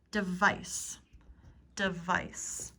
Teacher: the e sound here is like the schwa